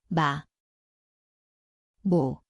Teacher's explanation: 미음, Zveni kot mesto je obe ustnici, nosno